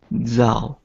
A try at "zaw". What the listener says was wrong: Zaw. Because it sounds like you're adding an extra sound. It's not ow. Don't be so. You gotta kind of reduce the U sound. Just kind of more of an aw with your mouth open.